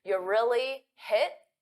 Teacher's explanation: we often pronounce you as a very unstressed yeah